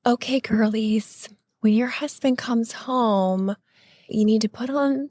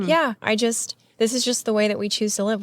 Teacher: It's breathy and it's little girl. It's a very submissive voice.